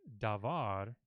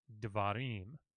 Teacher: So what happens in this word is that long A vowel in davar gets reduced, that's what they call it, reduced to a shava or a shawa. And so you no longer say davar, you say dvarim.